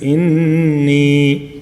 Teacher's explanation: مد اصلی ہے کہ ایک الف تک کھینچتے ہیں